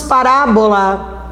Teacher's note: parábola caiu na antepenúltima, é uma proparoxítona real